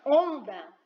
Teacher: Onda, o som do O nasalizado, mas eu uso o N também.